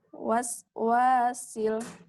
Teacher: Panjangkan sinnya. Rohawah namanya. Mengalir. Memanjangkan suara.